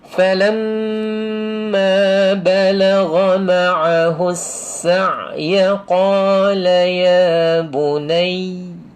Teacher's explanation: Falamma dia mesti sama panjang. Jangan falamma dia tak panjang, satu harakat je. Dia mesti dua harakat. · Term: wajibul ghunnah